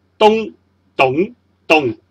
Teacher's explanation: 第四音就是咚，是由低音平过的咚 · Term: 阳平